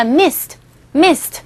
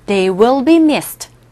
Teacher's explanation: 그래서 이렇게 약하게 유성음 뒤에서 d로 발음되는데 이 경우에는 무성음 sd에 오기 때문에 missed. 트 사운드가 나요. 나는데 아주 약하게 들립니다.